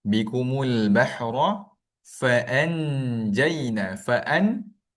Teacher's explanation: Fa'an, dia pergi sentuh huruf nun, maka dia akan bunyi jelas.